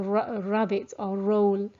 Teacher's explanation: where you're curling the tongue back onto the palate there should be no curling of the tip the tongue back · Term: english r